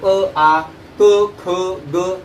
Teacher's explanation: अ आ क ख ग हे जे वर्ण आहेत किंवा व्यंजन आहेत, वर्ण स्वर किंवा व्यंजन आहेत, त्याचा उच्चार कंठाद्वारे होतो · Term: कंठवर्ण